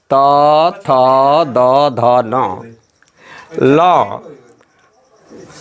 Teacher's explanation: तवर्ग त थ द ध न ल तथा दांती स का उच्चारण स्थान दांत से होता है, इसलिए इसे दंत भी कहते हैं।